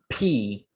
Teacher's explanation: will give an example of voiceless sounds in a second so when the glottis is spread and you get the puff of air